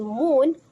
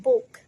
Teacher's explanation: the oo sound is either long as in moon or short as in book